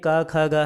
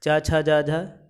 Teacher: तो कंठ में आता है का वर्ग, तालु में आता है चा वर्ग